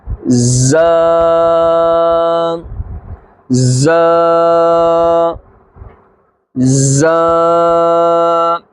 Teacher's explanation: زا، اور ایک اور بات بھی یاد رکھیں، زا حروف صفیریہ یعنی سیٹی والا حروف ہے۔ جب یہ زا ادا کریں گے تو سیٹی کی آواز آنی چاہیے · زبان کی نوک اور دونوں دانتوں کے اندرونی کنارے سے زا ادا ہوتا ہے